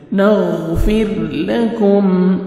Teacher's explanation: را ساکن سے پہلے زیر ہے، را کو اپنے باریک کرنا ہے، کاف کو باریک پڑھیں گے اور میم ساکن کا اظہار ہے، جلدی پڑھیں گے.